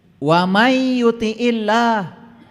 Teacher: Karena nun mati ketemu ya, ada tasdid. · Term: idgham biguna